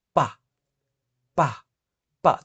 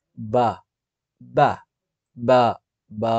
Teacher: ఇక్కడ వైబ్రేషన్ వస్తుంది కదా, బా మీన్స్ వైబ్రేషన్ వస్తుందంటే అది వాయిస్డ్ అనమాట.